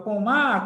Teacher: sílaba forte de Pomar é o Má vamos destacar aqui ó a sílaba forte de Pomar é o má · A sílaba forte de pomar é o ma.